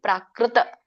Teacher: ಕ್ರೂ ಅಂತ ಹೇಳಬೇಡಿ ಕ್ರೂ ಊದಬೇಡಿ ಬಾಯಿಂದ ತುಟ್ಟಿ ಊದ್ತಿವಲ್ಲ ಹಾಗೆ ಕ್ರೂ ಅಂತ ಊದಿ ಹೇಳಬೇಡಿ